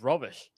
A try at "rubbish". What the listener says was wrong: not rubbish. Not like a robe.